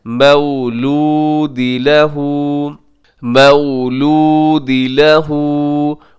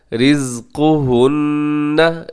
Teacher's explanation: उल्टा पेश है, लहू को लंबा कीजिएगा। रिज़्क़ुहुन्ना, रिज़्क़ु काफ पेश को मोटा पड़िएगा।